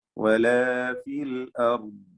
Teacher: റായിനും ضادനും തഫ്ഖീം കൊടുക്കുക